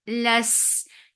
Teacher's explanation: Less open your jaws for fatha and then attach with sin. Sin will get sifa of rakhawa and safir and it is light. Less and with fatha the sound will be short.